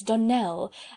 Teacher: the correct pronunciation of our name is Donnell, accent on the last syllable.